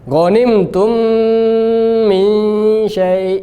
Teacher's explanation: Yang pertama panjang karena tingkatan tertinggi. Yang kedua gunnah ikhfa, tingkatan nomor 2.